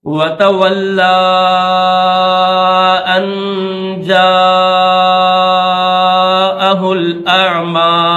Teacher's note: اس بڑی مد کو مد متصل کو 6 سیکنڈ کھینچنا ہوتا ہے